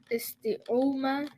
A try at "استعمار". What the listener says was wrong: There's no dhamma. The alif is long.